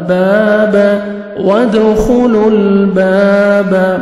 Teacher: وَادْخُلُوا با زبر الف با، با زبر با، باب، وَادْخُلُوا الْبَابَ، الف مدہ، 1 سیکنڈ ہم نے با کو کھینچنا ہے